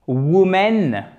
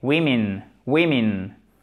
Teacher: Le O est bien différent du E et ça se prononce les deux comme un I court.